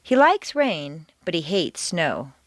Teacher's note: like and hate are contrasted and are the stronger words in the sentence